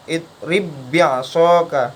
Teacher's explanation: tetap tidak mantul, padahal ba sukun itu juga termasuk huruf qalqalah, tetapi dia tidak memantul karena setelahnya itu adalah huruf ba juga, yang mana dia dikenai hukum idgham mutamathilan. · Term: idgham mutamatsilan